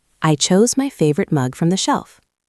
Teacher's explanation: The voice goes down at the end to show we are finished. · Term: falling tone